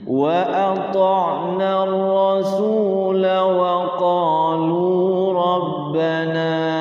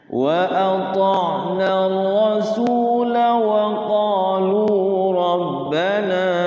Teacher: Ketika waqaf rasulah pendek, tapi ketika wasol la-nya tidak boleh dibaca panjang. Ya, kalau waqaf dibaca panjang 2 harokat, tapi kalau wasol dibaca 1 harokat, jadi tidak panjang.